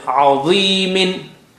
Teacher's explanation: Dha is very thick and high sounding. The kasra brings the effect down, but still is there.